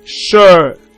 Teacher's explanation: Right, then we have voice, we have sh. So it's a voiceless post-alveolar fricative consonant sound.